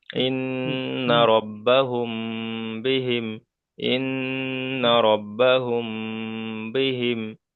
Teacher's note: মিম সাকিনের পরে বা এসেছে তাই মিমকে এক আলিফ পরিমাণ গুণনা করে পড়তে হবে